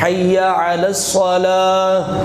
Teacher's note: اور اس میں صاد ہے، سین نہیں ہے، علی الصلاۃ، اور صاد کو پر کر کے یعنی موٹا پڑھا جاتا ہے